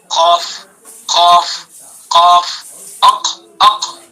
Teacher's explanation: قاف، قاف جڑ، جو جڑ ہے نا یہ نیچے والا حصہ، جڑ یہ ہوتی ہے نا، تو اس کو جڑ کو بالکل اس کے مقابل اوپر کے تالو پر لگائیں گے، زبان کی جڑ اور اس کے مقابل اوپر کا تالو، جو اوپر کا جو تالو ہے نا، اس کو جڑ کو سیدھا وہاں لگائیں گے۔